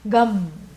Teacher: bindu means the extended nasalization comes at the end